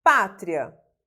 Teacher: A palavra pátria é uma paroxítona, né? A sílaba tônica está no pá